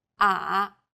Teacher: the third tone goes down from a low pitch then Rises to the middle of the pitch range